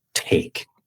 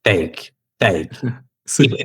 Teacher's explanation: Si decimos taco en inglés, como toca el cielo de la boca, los alveolos como justo detrás de los dientes y aspiramos el sonido con con aire cuando está al comienzo o al principio de la palabra · la lengua toca el cielo la boca como detrás de los dientes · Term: la T en inglés